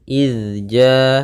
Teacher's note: Pada lafal izja'aha di sini ada huruf huruf zal sukun, yang dimana zal tidak boleh memantul ya, tidak boleh izja, tidak boleh juga ijaja, tapi dia izja ya.